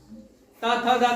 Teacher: त थ दादा बोलते हो तो दांत में लगती, किस में लगती है? त थ द दांत में जीभ लगती है ना, तो दंत से।